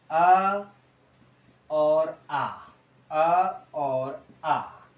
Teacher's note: आपके कंठ से बोला जाता है आपका, कौन से बोले जाते हैं? कंठ से बोला जाएगा आपका अ और आ